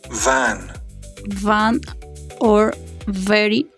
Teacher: Labiodental, the lower lip touches the upper teeth.